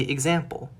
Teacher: We don't say X-sample, we say example, with a G sound followed by a Z sound